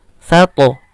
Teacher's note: huruf to ini huruf isti'la, ketika qalqalah menjadi o juga. Sato, bukan sate.